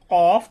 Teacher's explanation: জিহ্বার গোড়া তার বরাবর উপরের তালুর সঙ্গে লাগাইয়া 2 নক্তাওয়ালা কফ। দেখুন আমি যেভাবে উচ্চারণ করি কফ, তাহলে জিহ্বার গোড়াটা আমাদের মুখের যে অংশটা আছে তার উপরের দিকে জিহ্বার গোড়াটা লেগে যায়।